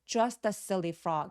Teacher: just의 티소리가 바로 뒤에 모험과 만나면서 just라고 부드럽게 연결하면서 너무 부각되진 않습니다. 오렌지색 부분들이 잘 드러나고 흰색 부분들은 힘을 좀 죽여서 thinking he was just a silly frog.